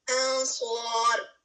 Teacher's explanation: یہاں پر اخفا ہوگا لیکن ہیوی اخفا ہوگا, ٹھیک ہے. ایک ہوتے ہیں کیوں ہیوی ہوگا, کیونکہ اس کے بعد ہیوی لیٹر آ رہا ہے.